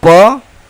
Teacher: ओठ से उच्चारण होने वाले व्यंजन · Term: ओष्ठ